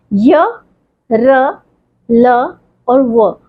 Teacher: ये सारे के सारे बोलते वक्त हम हवा के प्रवाह को स्वर की तरह से पूरा स्वतंत्रता से बाहर आने भी नहीं देते हैं और उसको रोकते भी नहीं है, तो इसलिए इसको अंतस्थ व्यंजन कहा जाता है।